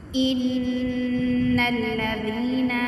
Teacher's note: اب ان پہ جو ہے وہ غنہ کریں گے، کیونکہ نون مشدد مشدد پہ ہمیشہ غنہ کیا جاتا ہے۔